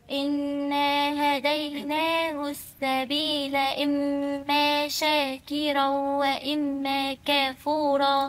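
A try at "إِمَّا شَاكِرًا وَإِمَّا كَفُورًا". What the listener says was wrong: مش كاف، أنت عمالة تزودي ألفات النهاردة يا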